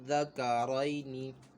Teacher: اور یہاں پہ یالین ہو رہا ہے، یا ساکن سے پہلے زبر ہے، یالین ہو رہا ہے، تو ہم نے اس کو بغیر کھینچے بغیر جھٹکا دیے نرمی سے معروف پڑھنا ہے